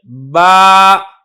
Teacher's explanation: जो बा है ये होंठों की तरी से निकलती है, यानी होंठों का वो वाला हिस्सा जो आपके मुंह के अंदर है, जो तर होता है, यहाँ से बा अदा होती है, बा।